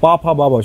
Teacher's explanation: পা ফা বা সব ঠোঁটে হচ্ছে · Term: অষ্টবর্ণ